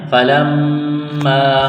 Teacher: یہ دیکھیں میم کے اوپر تشدید ہے، میم مشدد ہے تو یہاں غنہ کریں گے، آواز ناک میں چھپائیں گے